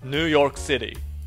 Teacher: 強制拍リズムを守るため本来の発音を逸脱し、ヌーの方をむしろ強く発音し、ヨークを少し弱めに発音します。 画面のように発音すると強制拍リズムが守られることを耳と口で確認してください。ニューヨークシティ。同様の要因で本来弱く発音されるべき語が語順や語の並びからリズム上強く発音される有名な例外を紹介し